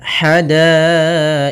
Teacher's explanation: Ha kecil halus dari tengah tenggorokan kita.